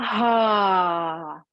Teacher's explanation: So you breathe in through the nostrils. Then you exhale in a voiced ha